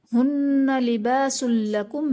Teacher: ہن لباس لکم میں نون مشدد ہے تو یہاں پر غنہ کر کے پڑھیں گے